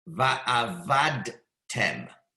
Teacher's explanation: it's not a moving shva, it's a resting shva. The proper way to read it is va'avadtem.